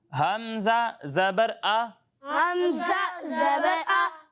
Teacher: حمزہ کو حلق کے نیچے والے حصے سے پڑھتے ہیں